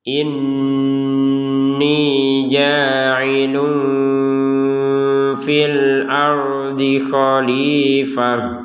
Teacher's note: Tanwin bertemu fa kita baca dengan samar. Yang namanya samar itu tetap ada dengungannya.